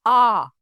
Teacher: पूरा मुंह खुला हुआ रहेगा अर्थात फटका मुंह खुला हुआ रहेगा आपका जैसे आ तो इसमें क्या होता है इस वर्ण का उच्चारण करने पर आपका पूरा मुंह खुला हुआ महसूस होता है उसे हम विवृत स्वर के अंतर्गत रखते हैं।